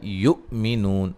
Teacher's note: حمزہ کو جھٹکے سے ادا کریں گے، نون واو مدہ ہے۔